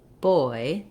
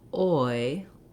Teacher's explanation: So for the oi vowel, we often spell that with oi or oy, and we start from a rounded shape, and then we glide up to an unrounded jaw more closed. So if I'm saying a word like boy, the oi, I have to close my jaw and lift my tongue. I start with a round O-like mouth, and I end without rounding, oi. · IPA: ɔɪ